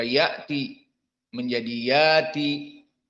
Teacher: Hamzahnya tidak dibaca ya'ti, tetapi yati